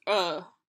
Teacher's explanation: in Britain you don't pronounce the R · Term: non-rhotic dialect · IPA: [ə]